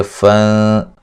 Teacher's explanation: یہاں نون تنوین کا باریک اخفا ہے، غنہ کریں گے